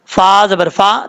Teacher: یہاں پر فا کا مخرج پہلے آپ کو بار بار بتا چکا ہوں کہ اوپر والے دانتوں کا کنارہ نیچے والے ہونٹ کی تری والی جگہ پہ لگے گا تو فا پڑھا جائے گا